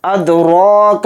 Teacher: را کو تھوڑا کھینچیں گے 1 الف کی مقدار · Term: کھڑا زبر